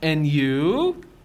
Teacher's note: Notice the rising intonation on and you.